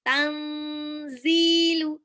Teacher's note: Nun sukun ketemu zai itu ilfa dibaca samar. Ditahan 2 sampai 3 harokat